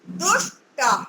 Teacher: तकार के स्थान पर टकार हो गया है। तवर्ग का तकार पहला वर्ण है, ऐसे ही टवर्ग का टकार पहला वर्ण है।